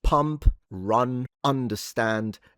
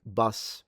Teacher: To be technical is an open mid and rounded vowel. It's mid, so it's kind of a little bit further in the back, if you will.